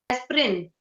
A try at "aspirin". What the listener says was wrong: you don't have to say the I at all.